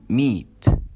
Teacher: في اللبس بيكون هنا slightly smiling, يعني الى حد ما بتكون اللبس او الشفتاه واخده شكل الابتسامه, وتكون tense مشدوده شويه. not rounded معناها ان هي مش مستديره, يعني ما نخليهاش زي الاو, لا كاننا بنبتسم بالضبط, فتكون معانا اللونج اي. · اللسان كمان بيكون tense وبيكون high, يعني لساننا بيكون مرتفع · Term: long e